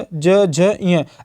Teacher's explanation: अगर आप इनको बोलेंगे तो आपकी जो जिह्वा है आपके मुख के ऊपरी हिस्से से टच हो रही होगी, जिसको हम लोग तालु कहते हैं।